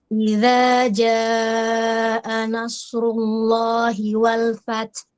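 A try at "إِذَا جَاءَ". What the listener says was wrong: Di jim nggak punya sifat hams, jadi tidak boleh bocor nafasnya. Idza bukan Nah gitu, jangan kebocor ya.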